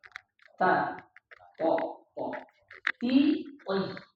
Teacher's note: To, dal, ta keluar dari antara ujung lidah, pangkal gigi depan sebelah atas.